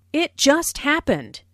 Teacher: Notice the stress on just, which emphasizes that the accident happened very, very recently.